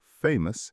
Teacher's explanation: Famous has a schwa in the final syllable.